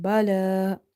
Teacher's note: Lam is having vertical fatha, so you have to read it by stretching.